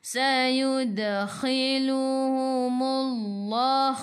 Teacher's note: Sayud masuk ke dalam dal, dal ada sukun dan lantunannya kecil. · Khu biar ada angin, biar menggelegak. Humullah sebelum Allah ada baris depan, kena baca dengan tebal. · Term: Qalqalah surah